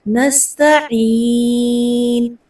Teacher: تا کو لمبا نہیں کرنا اور عین کو حمزہ میں تبدیل نہیں کرنا، عین کو وسط حلق سے ادا کرنا ہے